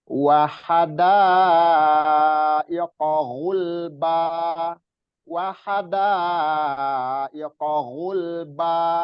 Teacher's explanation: Haknya itu nggak panjang ya. Da-nya yang panjang.